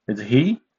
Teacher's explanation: The second tone is a rising tone. Similar to the tone of he in this sentence is he who did the great work.